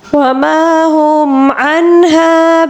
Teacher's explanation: نون ساکن کے بعد اظہار حلقی کا قاعدہ ہے یعنی کہ ہا ہے، اس کو ہم بغیر اخفا کے پڑھیں گے